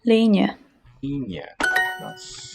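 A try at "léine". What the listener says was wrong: Not hearing the palatalization on the L.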